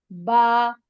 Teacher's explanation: با ادا ہوتا ہے ہونٹوں کے گیلے حصے سے. دونوں اوپر نیچے کے دونوں ہونٹ آپس میں ملتے ہیں. با، گیلا حصہ، اندر والا تری والا حصہ.